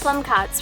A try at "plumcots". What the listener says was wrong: Did you say plum cocks? no, plum cots. C-O-T, not C-O-C-K. No, you said plum cock.